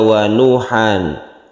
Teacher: meskipun tidak ada sukunnya ini tetap panjang sebagai mad tabi'i